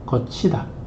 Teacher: 구개음화도 시험에 잘 나오죠. 디귿이나 티읕 발음이 지읒이나 치읒으로 나는 겁니다